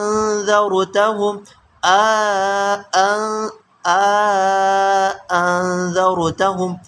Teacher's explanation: الف کا ادخال ہوگا، اس میں مد نہیں ہوگی، ادخال الف ہوگا اور حمزہ ثانیہ کی تسہیل ہوگی۔ انذرتہم انذرتہم، یہ قرأت ہے ابو عامر بصری کی اور ابن کثیر مکی کی، یہ تیسری قرأت ہے۔ · حمزہ ثانیہ کو ہم اپنے مخرج سے مکمل طور پر ادا نہیں کریں گے اور نہ ہی حمزہ ثانیہ کو الف سے بدل کر پڑھیں گے